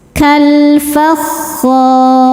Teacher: alif lam qamariyah, karena alif lam menghadapi huruf qamariyah yaitu fa, maka lam dibaca jelas.